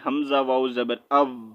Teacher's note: یہ جو واو ہے اس کو ہم نے میوٹ کر دینا ہے، سائلنٹ کر دینا ہے، اس کو نہیں پڑھنا